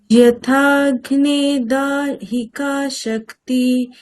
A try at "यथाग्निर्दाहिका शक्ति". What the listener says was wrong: ইয়াগ্নির রকার আছে তো তার উচ্চারণটাও শোনাতে হবে। আপনি করছেন, ইটস ওকে, কিন্তু যে শ্রোতা তার কানে তো পৌঁছাতে হবে। তার মানে আপনাকে সেইভাবেই রেফের উচ্চারণটা করতে হবে।